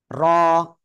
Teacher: এই যে র অক্ষরটা না কোন জায়গা থেকে উচ্চারণ হবে জানেন? র অক্ষরটা জিহ্বার আগার পিঠ তার বরাবর উপরে তালুর সঙ্গে লাগে আমরা উচ্চারণ করব।